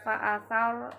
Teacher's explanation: Di ayat keempat fa'athar ini ro tafhim karena ro berada setelah huruf yang berharokat fathah